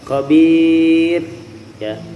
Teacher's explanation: La khabir ya, itu mad arid sukun, roknya ditipiskan.